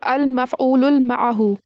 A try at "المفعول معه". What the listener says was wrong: Al-maf'ulu ma'ahu, not al-ma'ahu. Al-maf'ulu ma'ahu.